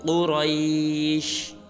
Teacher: قریش میں قاف اور را کو پر ادا کریں گے